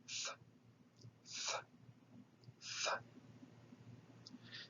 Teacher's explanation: The theta is a voiceless dental aspirate. It is TH without vibrating the voice box.